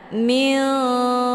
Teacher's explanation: Mana ab'ad itu jauh antar makharijul huruf nun dengan kaf, posisinya saling berjauhan. Cara bacanya, nunnya disamarkan kemudian siap-siap menuju ke huruf kaf. Minkum. Jadi disamarkan nunnya dulu, jangan langsung minkum, ya. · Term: ikhfa ab'ad